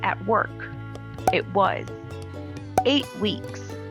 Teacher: when the next word begins with a consonant t is dropped